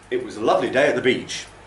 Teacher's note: lovely day and beach okay those carry the stress first syllable of lovely on a day and all of Beach okay all those other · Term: three stresses